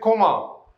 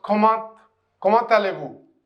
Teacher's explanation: I will say one thing that it is, if I cover this one, I will say comment, but because the T is silent. But when next word starts with a vowel, then you can pronounce T. So it becomes comment allez-vous?